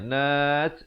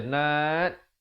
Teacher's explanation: Ada hamasnya, nat gitu ya, bukan baca nat, tak ada hamas, itu tak betul.